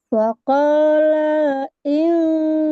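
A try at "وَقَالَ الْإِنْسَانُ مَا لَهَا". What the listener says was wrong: Sa, sa-nya kurang panjang, Bu. Sanu.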